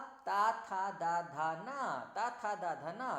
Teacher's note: जीभ का सबसे लास्ट वाला जो सिरा है वो दांतों के पीछे जाके लग रहा है